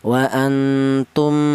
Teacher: Ini ini dibaca dengung. Jadi di samping idgham juga ada dengungnya di sini ya. Dua ketukan. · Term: ghunah